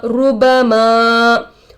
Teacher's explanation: मीम पर जबर की हरकत है जल्द पढ़ेंगे। अलिफ जिससे पहले जबर हो अलिफ मद्दा होगा, थोड़ा खींच कर पढ़ेंगे